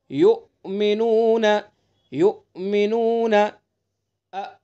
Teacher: हमजा में सिफत शिद्दत की वजह से सख्ती है इसलिए इसको खूब मजबूती से अदा करें